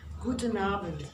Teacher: you write it with a D, but you tell it with a T